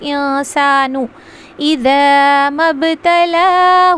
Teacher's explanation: انسانو میں اخفا ہوگا، نون کی آواز کو چھپائیں گے ، انسانو اذا مبتلاہ، مب یہاں پہ قلقلہ کریں گے، مبتلاہ